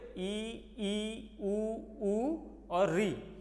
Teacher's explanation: जहाँ पर मुख कम खुलता है उसको हम समृद्ध स्वर कहते हैं।